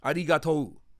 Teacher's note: So yeah, the rolled R, arigato, right? Arigato, and that's like a longer O at the end.